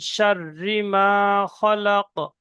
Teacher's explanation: এখানে রর উপরে তাসদিদ আছে, তাসদিদকে দুবার পড়তে হবে, একবার শিনের সঙ্গে একবার নিজে নিজে। · নুন সাকিনকে আওয়াজ নাকে তুলে একালি পরিমাণ গুণনা করে পড়তে হবে